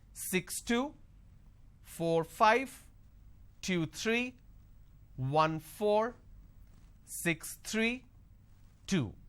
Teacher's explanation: the moment I drop my tone that means it's the end of the series · for every two digit the second digit my tone is going up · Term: intonation